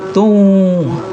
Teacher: Tun dengan wa itu bacanya tung. Ya, bukan tun wa tapi tung.